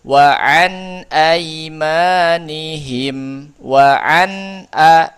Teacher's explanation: Jelas bunyi nun sukunnya, ya, baik tanwin ataupun nun sukun asli, jelas bunyinya. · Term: idhar halqi